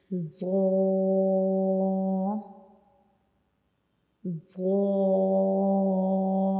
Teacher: ہماری زبان کی نوک کا اوپر والا حصہ جو ہے یہ ہمارے اوپر والے سامنے والے جو 2 دانت ہوتے ہیں ان کے کناروں کو ٹچ کرے گا. ٹھیک ہے، ان کی کناروں سے جا ملے گا، تو تب ہم ذو کو پڑھیں گے، جیسے کہ ذو ذو. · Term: ذو کا کیا مخرج